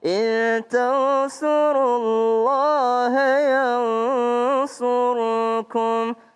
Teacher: Ya ayyuhalladzina amanu in tansurullaha yansurkum. Iya, kalau disambung Allahnya cuma dua harokat.